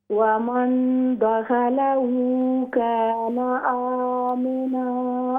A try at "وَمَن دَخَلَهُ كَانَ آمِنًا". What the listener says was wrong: دوبارہ پڑھیں، خا کو موٹا کر کے پڑھیں. خا حروف مستعلیہ میں سے ہے نا. حروف مستعلیہ کتنے ہیں موٹے پڑھے جانے والے حروف؟ 7 حروف، 7 ہیں، ٹھیک ہے نا. خص ضغط انقذ، تو یہ خا ان میں سے، تو اس کو موٹا کر کے وَمَن دَخَلَهُ كَانَ آمِنًا.